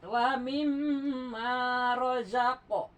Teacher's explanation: guna tuh ditahan dua sampai 3 harkat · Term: gunah